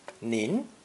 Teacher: the polite form of you pronounced second tone